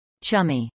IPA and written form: ˈtʃʌmiː (chummy)